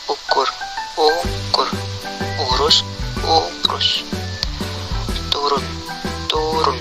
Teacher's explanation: Vokal U. Vokal belakang, tinggi bawah, bundar, tertutup.